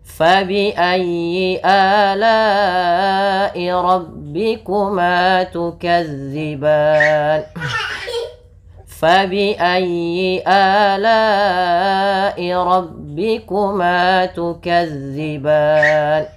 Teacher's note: sebelum huruf sukun arid ini ada huruf mad berupa alif. Maka ini kita panjangkan berapa harakat? Boleh 2, boleh 4, boleh pula 6 harakat.